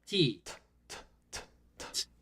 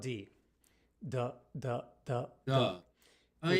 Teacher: for T and D everything is in the same place our tongue our lips our jaw Etc we simply engage our vocal chords to create a d